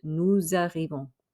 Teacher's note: Now notice, normally we don't say the S on nous. However, because it's followed by a vowel, we will say that S, but it makes a Z sound.